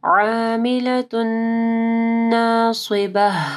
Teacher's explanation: تنوین کے بعد نون ہے، ادغام آ رہا ہے غنہ کے ساتھ